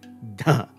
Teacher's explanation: The fourth stop is going to be both voiced and aspirated. So there's vibration and a puff of air. And again, the stop is made by the tongue on the tips of the teeth.